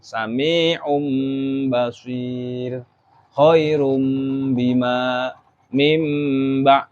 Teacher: suara nun sukun atau tanwinnya diganti dengan mim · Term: iqlab